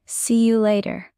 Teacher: You becomes yah in fast speech.